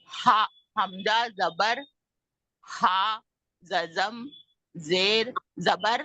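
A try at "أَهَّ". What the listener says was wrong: नहीं नहीं नहीं नहीं नहीं नहीं, हमजा जबर हा जज़म का पहले करें। आह, आह, आह, हा जबर हा, आह हा।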